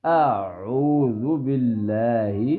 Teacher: شروع سے عین کی آواز نہیں نکالنی, شروع سے الف سمپل پھر ساتھ ہی عین کی